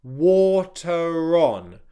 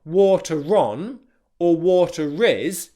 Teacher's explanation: It's just a very, very subtle connecting R